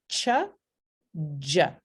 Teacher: Para estas dos consonantes como que se coarticulan estos dos sonidos. Tenemos un bloqueo completo del aire con el t y el d y luego fricción con sh y j. El sonido que resulta es ch, y. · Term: Africadas